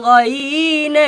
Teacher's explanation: জিহ্বার গোড়ার শেষ ভাগ, তার বরাবর উপরের তালুর সাথে হালকা চুলকিয়ে যার উচ্চারণ করতে হয়